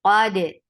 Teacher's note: Dal will get sifa of qalqala.